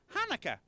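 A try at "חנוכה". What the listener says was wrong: No, more in the back of the throat. Ha. Ha.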